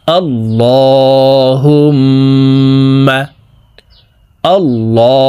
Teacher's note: মিমের সাথে নাকের বাঁশি থেকে তিন সেকেন্ড পরিমাণ গুন্নাহ করে পড়বো